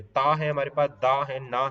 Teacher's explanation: ता है हमारे पास, दा है, ना है, तो इसमें हमारे दांतों का इस्तेमाल हो रहा है बोलने में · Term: दंत्य